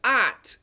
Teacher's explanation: see the word is pronounced odd oh ugh T aught however when you watch a video the American doesn't say aw he says ah